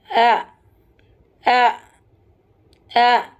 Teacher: حمزہ اور ہ یا نچلا حلق سے ادا ہو رہا ہے، لوور تھروٹ